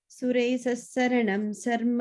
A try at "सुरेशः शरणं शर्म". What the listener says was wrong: sorry, the first line, sharanam, sharma, both are sha sounds.